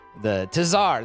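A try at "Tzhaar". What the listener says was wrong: the T is silent.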